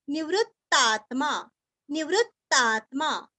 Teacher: नीरस्व वृ के ऊपर आघात